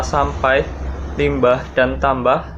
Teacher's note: Struktur bunyi MP atau MB di dalam kata sampai, limbah, dan tambah sama-sama berfitur bilabial